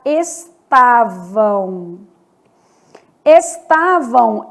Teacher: Estavam, esse M do final vai ter som de U. Então, estavam, som de U. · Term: som de semivogal